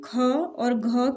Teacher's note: ख कहने में हवा ज़्यादा निकलती है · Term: महाप्राण